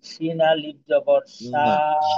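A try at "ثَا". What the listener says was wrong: না, আচ্ছা শিন হবে না, কিন্তু শিন থাকলে 3টা দাঁত থাকতো, তো এখানে তো দাঁত একটা, এটা তাহলে হবে সা।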